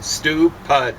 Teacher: maybe with a heavier Accent on the second syllable